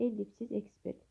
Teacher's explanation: Ellipsis sözündə vurğu əvvəldədir. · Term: vurğu birinci hecadadır